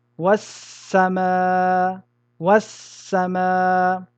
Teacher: nous allons rentrer le L dans le sin, de telle manière que les deux lettres vont devenir une seule et même lettre du genre de la deuxième, c'est-à-dire le sin, en mettant une shadda sur celle-ci. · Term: idgham